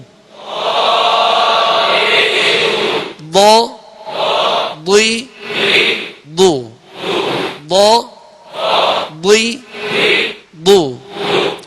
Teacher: اس بات کا خیال رکھیے گا کہ اس کے مخرج سے یہ تمام حروف کی بنسبت، کیونکہ عربی کا خاص حرف ہے اور تمام 29 حروف میں سے اس کو ادا کرنا، یعنی اس کے مخرج میں کچھ طوالت سی ہے، یعنی زبان کی کروٹ جب اوپر کی داڑھوں سے لگتی ہے تو لگنے کے بعد فوراً نہیں ہٹتی، آہستگی کے ساتھ یوں ہٹتی ہے، لگ کر آہستگی کے ساتھ یوں ہٹتی ہے اور ضاد ادا ہوتا ہے.